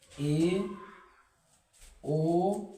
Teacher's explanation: अगर ऐसे वर्ड जिनका उच्चारण या ऐसे स्वर जिनका उच्चारण करते समय हमारा जो मुख द्वार है वो कैसा खुलता है, आधा खुलता है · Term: अर्ध विव्रत